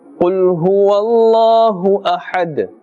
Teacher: And since we are ending with a dal, and this dal we are giving it a temporary sakin or temporary jazm, and therefore qalqala is taking place here. Slightly bounce or echo the sound of the dal.